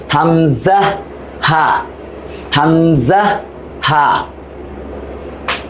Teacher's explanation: হামজা হা, হলকের শুরু